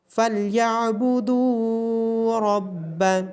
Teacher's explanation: عین کی آواز گلے کے درمیان سے آئے گی، دال کے بعد واو مدہ ہونے کی وجہ سے دال کو لمبا کیا جائے گا اور را کو موٹا پڑا جائے گا۔